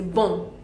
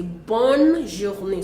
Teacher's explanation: because the N is double there, so we have to pronounce the N and say bonne journée.